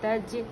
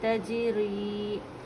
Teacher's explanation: जीम क़लक़ला है, ता को मिलाकर पढ़ेंगे